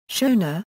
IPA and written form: ˈʃoʊnə (Shona)